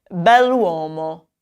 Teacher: it actually sounds like it's one continuous word, even with the apostrophe in there